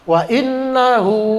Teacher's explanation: Silah qasirah itu panjangnya 2 harokat aja. Ya, nggak terlalu panjang.